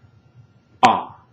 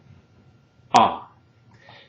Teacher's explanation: Now keep in mind also that, like other vowel sounds in Spanish, the pronunciation of ah tends to be fairly tense or crisp sounding